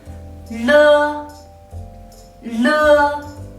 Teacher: Le is an alveolar initial but the lateral sound.